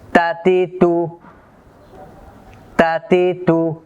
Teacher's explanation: তা হরফের মাখরাজ হলো জিহ্বার আগা সামনের উপরের দুই দাঁতের গোড়ার সাথে লাগাইয়া, অর্থাৎ দুই দাঁতের গোড়ার মধ্যে একটু গর্ত আছে সামান্য, এই গর্তের মধ্যে জিহ্বাটা লাগবে।